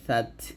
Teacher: জিহ্বার আগারটা উপরের দাঁতের আগে লাগাবেন আর তাকে গিয়ে ধরে হামজ করবেন সাতা জবরের সাত জাল তা